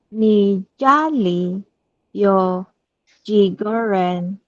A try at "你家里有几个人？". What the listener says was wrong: That's right.